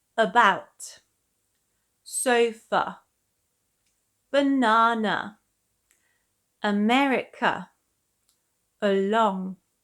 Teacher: It is usually used in unstressed syllables, as in the word again. The schwa is very short and relaxed. You don't really need to open your mouth fully, just a quick sound. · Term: schwa sound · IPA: /ə/